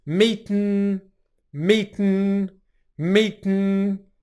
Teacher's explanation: we're cutting off airflow at the end of 't' and then airflow is coming out of our nose for the 'n' sound